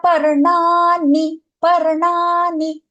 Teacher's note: Parnani, we have the ana, the cerebral una, and then the dental na as well.